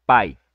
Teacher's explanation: Quando a vogal está antes da semivogal, o que temos aqui? Um ditongo decrescente, porque o mais forte está vindo antes do mais fraco